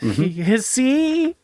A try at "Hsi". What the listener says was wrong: C, just the C. The H is silent.